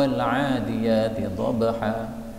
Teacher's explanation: saya tadi baca dengan idgham, taknya lebur pada dhad